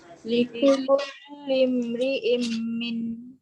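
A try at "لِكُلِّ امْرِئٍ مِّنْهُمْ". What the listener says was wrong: Panjang sikit, jangan laju sangat dekat idgham tu. Kita nak praktis bacaan, kalau tak jelas dengung. Likul lim ri'im minhum. Okey, jangan kedekut dengung.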